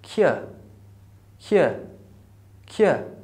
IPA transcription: k